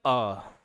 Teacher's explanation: मध्य स्वर में एक ही होता है अ जो है वो बीच से आता है